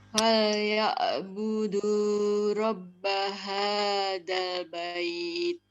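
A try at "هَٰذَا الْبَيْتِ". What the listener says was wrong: Za-nya bertitik. Za, ujung lidah. Zal bait. Ulang.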